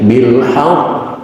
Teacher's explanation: selain dipaksa berhenti dan juga memiliki tasdid, maka bacaannya tidak cuma bil haqq, tapi ada ditahan sedikit, bil haqq ditahan. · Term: akbar